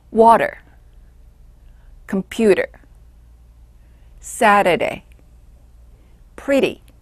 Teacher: T가 모음과 모음 또는 유성음과 유성음 사이에 올때 빠른 D처럼 나는 경우예요.